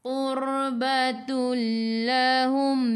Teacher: Tanwin 99 bertemu dengan lam, di atasnya ada sabdu, idgham bila gunnah, masuk tanpa dengung.